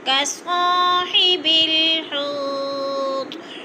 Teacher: الف خالی سے پہلے صاد کے اوپر زبر ہے تو الف مدہ 2 حرکات کے برابر ہم نے اس کو کھینچ کر پڑھنا ہے